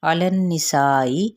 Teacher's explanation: علی النساء، عین کے یعنی حرکت کو لمبا نہیں کیا جائے گا اور لام کے ساتھ نون کو ملائیں گے تو غنہ کرتے ہوئے آگے بڑھیں گے تو سا پہ 4 حرکت لمبا کریں گے، حمزہ کی زیر کو باریک اور سختی سے ادا کریں گے